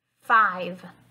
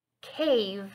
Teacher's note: don't forget that in order to make the V sound correctly you need to use your top teeth and bite down lightly on your bottom lip we're going to blow out air and use our voice at the same time if it helps you can place your hand on your throat